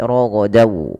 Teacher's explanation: Kalau huruf setelahnya waw, maka masukkan tanwinnya ke waw dan ditahan dan dibunyikan dengan huruf waw. Suara nunnya hilang. Raghadan menjadi ragadaw. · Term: idgham bi gunnah